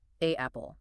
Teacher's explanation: >> That click you feel is called a glottle stop. Your vocal cords literally have to slam shut and immediately reopen to separate the two vowel sounds so they don't smear together into a single unintelligible noise.